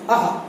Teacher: आपके कंठ से आहा का उच्चारण होता है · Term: विसर्ग